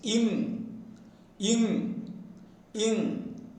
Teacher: produced by raising the back of the tongue towards the soft palate and making a tight contact with the palate